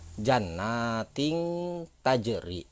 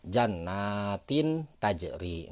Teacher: maka dibacanya akan berbunyi eng atau samar ya